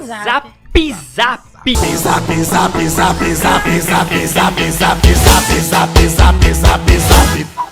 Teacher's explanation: você tem que pronunciar um I epentético assim, bem forçado